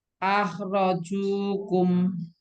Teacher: Junya nggak boleh panjang-panjang, 2 harokat saja. akhrajukum Nah, junya bersih.